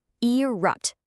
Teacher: You hear that crisp t on the end, right?